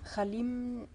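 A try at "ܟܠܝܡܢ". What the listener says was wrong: Il n'y a pas de A. Hein? Khlim na. Khlim na.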